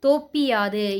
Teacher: பி அப்படின்ற இந்த எழுத்து தனக்குரிய ஒரு மாத்திரையிலிருந்து குறைஞ்சி அரை மாத்திரை அளவுக்கு ஒலிக்குது. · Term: குற்றிய லிகரம்